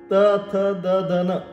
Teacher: जीवा आपली कशाला जाऊन टेकते दाताला जाऊन टेकते म्हणून ते झाले दंत